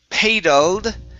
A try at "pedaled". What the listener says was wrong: it's a short E. Pedaled. Okay, add the ed at the end, so it's pedaled.